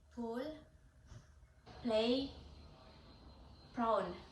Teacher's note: start your mouth close then release a burst of air by quickly opening your lips this creates the P sound make sure to produce a strong burst of air for example